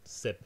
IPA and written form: sɪp (sip)